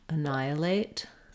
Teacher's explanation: a question about how to pronounce the word annihilate um annihilate so we have second syllable stress here that means letter a is going to be vowel schwa unstressed